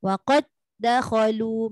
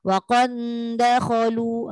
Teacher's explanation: maknanya dia tidak ada bunyi langsung antara dal pertama kepada dal kedua tu, tapi dia sambung.